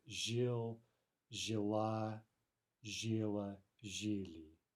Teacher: the feminine ending, the a, will be stressed in the past tense, but the other forms won't be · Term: feminine strong